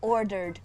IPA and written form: ɔːdəd (ordered)